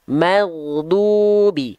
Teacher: ghain sukun jangan sampai memantul, tapi jangan sampai juga ghain sukunnya terputus. Magdu. Tapi si suaranya itu harus mengalir tanpa adanya pantulan.